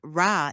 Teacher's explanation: This involves a quick tap of the tongue against the alveolar ridge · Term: Tap or flap